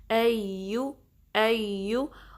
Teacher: या जो है दरमियाने ज़ुबान के हिस्से से निकालना है, ठीक है, ज़ुबान के अगले हिस्से से नहीं, या की साउंड नहीं आनी चाहिए बल्कि या, ओके।